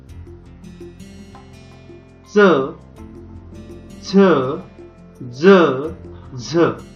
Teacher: ज्या वर्णांचा उच्चार करताना जिभेचा स्पर्श दातामागील टाळूला होतो तेव्हा त्यांना दंत तालव्य वर्ण असे म्हणतात